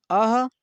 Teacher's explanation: अह जब बोल रहे हैं तो कंठ, कंठ का प्रयोग हो रहा है, यानी सबसे भीतरी तंत्रिका का प्रयोग हो रहा है, तो ये अह का उच्चारण स्थान कंठ है।